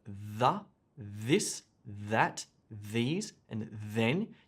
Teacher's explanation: So there's the sound with no breath, like the, this, that, these, and then. You can feel the noise in your throat.